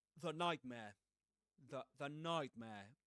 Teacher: Otherwise, you will usually hear the nightmare, the nightmare with a schwa, you know, the nightmare. And because nightmare begins with a consonant sound, n. That's why you, in connected speech, without stressing the, you will say the nightmare with a schwa.